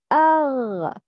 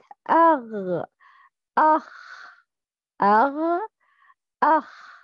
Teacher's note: From the closest part of the throat, the joining point of the tongue and the inner soft palate.